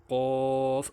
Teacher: जुबान की जड़ का आखरी जो कवे के पास है जब ऊपर के तालू से लगे तो उससे फिर कफ अदा होता है